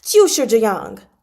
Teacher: And they're all in fourth tone